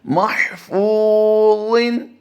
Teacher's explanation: اگلا لفظ جو آپ دیکھ رہے ہیں اس میں ہا کی ادائیگی اور غا کی ادائیگی ہم احتیاط کے ساتھ کریں گے اور فا کو ہم لمبا کر کے پڑھیں گے. پورے لفظ میں صرف فو کو لمبا کریں گے ہم. فا واو پیش فو، واو مدہ کا قاعدہ ہوتا ہے یہاں پر.